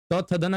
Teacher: ये दंत की सहायता से बोले जाते हैं